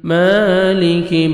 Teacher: میم کھڑا زبر ہے، 1 سیکنڈ میم کو کھینچنا ہے ، کاف کو باریک پڑھیں گے، مالک واو پہ لپس کو